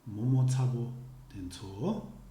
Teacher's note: the intonation pattern would be all the syllables are dampened except for the last syllable, which is stressed